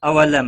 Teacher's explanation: میم ساکن کے بعد یا آیا ہے، اظہار شفوی ہوگا، گنہ نہیں کریں گے،